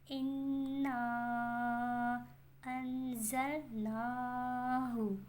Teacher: نا کھینچیں گے کھڑی حرکات ہے، بٹ اتنا نہیں کھینچیں گے جتنا ہم مد لازم کو کھینچیں گے اور حروف مدہ لین کو کھینچیں گے۔